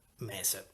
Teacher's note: il termine che noi utilizziamo mese ha avuto la soppressione appunto della nasale alveolare